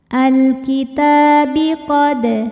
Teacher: Ta dinamakan dengan mad thobi'i muqaddar. Sebab tan-nya berbaris fathah panjang. Maka huruf ta panjang dua harakat. · Sebab ada alif lam yang menghadapi huruf qomariyah yaitu kaf. Maka lam sukun dibunyikan dengan jelas atau disebut dengan idhar qomari